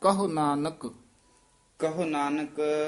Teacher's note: ਕਹੁ ਹੋੜਾ ਨਹੀਂ ਲਾਉਣਾ ਕਹੁ ਛੇਤੀ ਬੋਲਣਾ